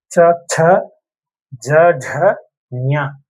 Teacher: நாக்கோட முதல் பகுதி மேலத்தோட நடுப்பகுதியை தொடங்கும்